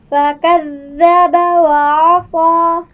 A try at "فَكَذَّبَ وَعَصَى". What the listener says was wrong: بہت زیادہ مخرج کے اوپر زبان کو دبائیں گے نہیں. فَكَذَّبَ فَكَذَّبَ پھر پڑھیے.